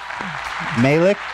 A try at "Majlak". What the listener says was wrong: Well, that sounds like an I. It should be Majlak.